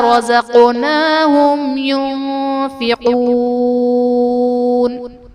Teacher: رزقناہم ينفقون میں میم ساکن کے بعد حرف با اور میم کے علاوہ یا ہے تو یہاں پر اظہار شفوی کا قاعدہ ہوگا، یعنی میم ساکن میں ہم غنہ نہیں کریں گے · رزقناہم میں قاف حرف قلقلہ ساکن ہے تو یہاں پر قلقلہ خوب ظاہر کریں گے